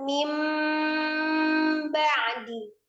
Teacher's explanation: Jadi, nun sukun itu langsung diganti dengan mim sukun dengan tanpa memanjangkan mim kasrahnya ya. · mengubah nun sukun atau tanwin menjadi mim sukun, ya, menjadi mim sukun disertai dengan ghunah. Hukumnya namanya iqlab.